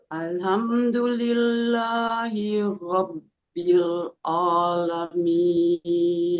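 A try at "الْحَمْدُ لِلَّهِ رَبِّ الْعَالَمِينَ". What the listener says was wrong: Buka alamin bukan a lurus alamin.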